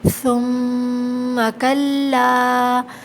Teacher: دوبارہ یہی آیت ہے، ثم کلا، یہاں دیکھیے میم مشدد ہے، یہ غنہ ہوگا، ٹھیک ہے، اور ثم میں ثا نرمی سے ادا ہوگا، زبان دانتوں کے بیچ میں آئے گی، تھوڑی سی زبان، اور کلا میں الف مدہ ہے۔